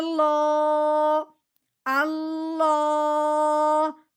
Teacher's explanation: موٹا کر کے پڑھنا ہے، کیونکہ لفظ اللہ سے پہلے زبر آ گئی ہے. لام کھڑی زبر لو اللہ.